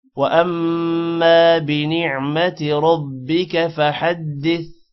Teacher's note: میم پر شد ہے جس کی وجہ سے میم پر غنہ بھی ہوگا اور حمزہ میم کے ساتھ ملے گا اور میم الف زبر ما الف کی وجہ سے ما تھوڑا لمبا ہوگا.